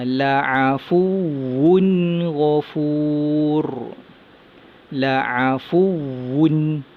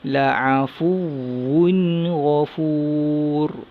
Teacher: Wun baca dengan jelas, baca dengan izhar halki.